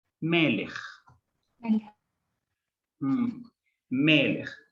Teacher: El acento lo tengo que conservar en la penúltima sílaba, en melech, en la primera E.